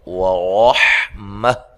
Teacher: ورحمہ را کو موٹا ادا کرنا ہے، حا کو واضح نکالنا ہے